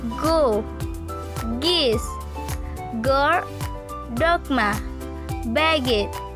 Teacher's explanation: Pronunciation: when we pronounce g, it is articulate like g expect that the breath force is weaker and the vocal cord vibrates. Occurrence: g occurs initially, medially, and finally.